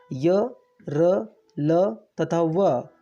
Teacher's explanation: य, र, ल तथा व 4 अंतस्थ व्यंजन हैं। इन व्यंजनों का उच्चारण करते समय जिह्वा पूरी तरह से इनके उच्चारण स्थानों को स्पष्ट स्पर्श नहीं करती है